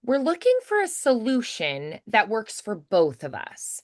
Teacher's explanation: I probably would emphasize solution and maybe both of us